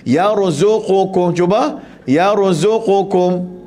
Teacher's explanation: pastikan di sini ra tu mati, jangan melantun. Kul kita baca yarzuqukum, ada orang jenis suka melantun ni.